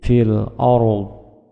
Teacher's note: ketika berhenti dodnya disukunkan fil ardhi menjadi fil ARD